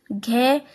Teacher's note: घ सघोष है और महाप्राण है।